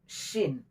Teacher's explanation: Shin, tengah-tengah lidah dengan langit, dan desisnya harus kuat. Tafashi namanya.